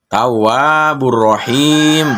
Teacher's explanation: Yang mana madnya kemudian di akhir kalimat, dan ini maka diberi hukum bahasanya mad akhir disukun. Dibacanya panjangnya 5 harokat.